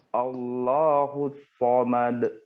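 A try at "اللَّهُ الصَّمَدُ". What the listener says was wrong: D-nya lagi hilangkan. Allahus samad.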